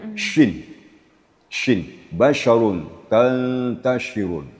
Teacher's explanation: syin itu makhrajnya adalah di tengah-tengah lidah dan langit-langit atas. · kemudian sifatnya adalah tafasyi. Tafasyi itu menyembur.